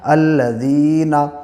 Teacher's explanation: نون کے اوپر زبر کو جلدی ادا کریں، تھوڑا بھی نہ کھینچیں